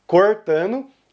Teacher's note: E Goiás, como sempre, vai usar o R retroflexo, cortando. E por último aqui, o último ponto é sobre, novamente, as vogais, que aqui a gente notou que quase todos os estados vão pronunciar a primeira letra O dessa palavra com O fechado, cortando.